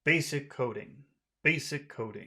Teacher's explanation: serious serious serious serious okay serious so we're going to we we'll finish our phrase in a low tone but we'll also want to keep low tones because that sounds more serious